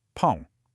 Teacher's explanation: for bread, we have that wonderful nasal sound